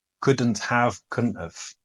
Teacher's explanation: what happens is the D disappears in couldn't, and the T disappears also.